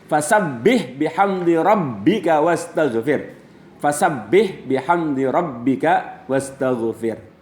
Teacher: pada kata rabbika huruf bertasydid dibaca rangkap, yakni tidak ditahan